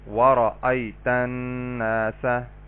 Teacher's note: را کو پر کر کے پڑھیں گے، اس کے اوپر زبر یا پیش ہوگی تو را کو پر پڑھا جائے گا، جیسے وَرَأَيْتَ النَّاسَ۔